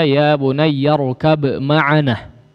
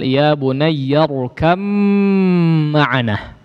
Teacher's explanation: Tapi kalau diwasal ya bunayyar kam ma'ana ya, huruf ba-nya betul-betul masuk secara sempurna kepada huruf mimnya ya. Jadi huruf ba-nya seolah tidak dianggap ya, atau dianggap melebur masuk kepada huruf mim secara sempurna, sehingga seolah huruf mimnya bertasydid dan huruf ba-nya tidak dianggap ya. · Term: idgham yang digunnahkan